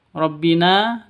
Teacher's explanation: na panjang dua ketukan karena ada ee alif diawali dengan fathah. Awalnya mad asli.